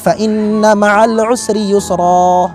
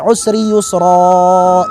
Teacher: Harokatnya atau panjangnya hanya 2 harokat. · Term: mad iwad